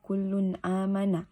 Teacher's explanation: kedua dalam Quran surah al-baqarah ayat 285 dibaca kullun amanah alasannya tanwin dibaca jelas ketika bertemu dengan huruf hamzah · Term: izhar